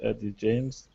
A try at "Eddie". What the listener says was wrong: It sounds like you're saying Abby James. Let's say that name one more time. Eddie. Eddie. Eddie with an E sound.